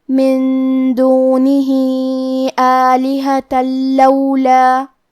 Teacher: یہاں حکم ہے ادغام بغیر غنہ، لہذا ہمیں یہ حکم کو بغیر غنہ سے لیکن تشدید کے ساتھ ادا کرنا ہے۔